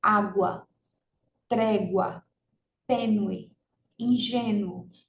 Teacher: esse ditongo é um ditongo crescente né e é um ditongo oral